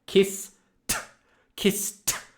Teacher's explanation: you should see a quick little explosion of air like Kiss Kiss T I see it and the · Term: explosive T sound